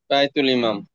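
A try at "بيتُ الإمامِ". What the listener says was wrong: বাই। তো শেষ বলেন, আপনি তো হুজুরদের মতো বলতেছেন। শেষটুকু বল, ইমা মি।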